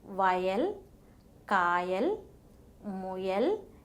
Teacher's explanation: While producing this sound, the mid part of the tongue is raised and nearly touches the palate. But the air escapes without any friction through the sides and above the tongue.